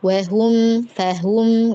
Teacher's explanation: Wahum, fahum gitu. Yang penting wa sama fa-nya jangan lebih tinggi gitu